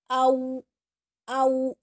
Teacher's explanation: Kalau yang bertemu dengan waw harus monyong. Au berbentuk dengan huruf u, memonyongkan bibir secara sempurna. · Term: huruf lin